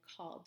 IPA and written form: kɔld. (called)